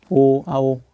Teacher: कंठ और ओष्ठ मतलब जहाँ गले से और होठों से दोनों से उच्चारण हो रहा हो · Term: कंठ ओष्ठ